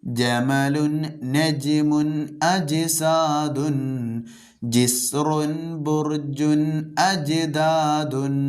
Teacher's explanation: ജീമിൻ്റെ ഉച്ചാരണം നാവിൻ്റെ നടുഭാഗം അതിൻ്റെ തൊട്ട് മേലെണ്ണാക്കിലേക്ക്, മുകളിലെ അണ്ണാക്കിലേക്ക് ടച്ച് ചെയ്യുമ്പോഴാണ് ജീം ഉച്ചരിക്കുക